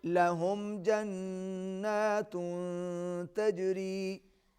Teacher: میم پر آواز ناک میں نہیں جائے گی, یہاں پر اظہار ہوگا